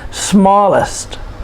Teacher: It's a 2-syllable adjective, and we put the stress on the first syllable.